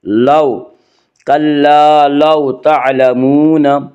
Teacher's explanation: کلا لو، واولین، واولین وہ واو جو ساکن ہو اور اس سے پہلے زبر ہو، واولین کو نرم آواز کے ساتھ جلدی پڑھیں گے